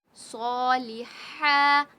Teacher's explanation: وعملوا صاد کو ہم موٹا پڑھیں گے · صالحہ، ہا بھی حلق کے درمیانی حصے سے نکلے گا. صاد کو کھینچیں گے، ہا کو کھینچیں گے، لیکن لام کو نہیں کھینچیں گے